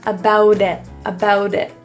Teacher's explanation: The T in about becomes a flap T because it's surrounded by vowels.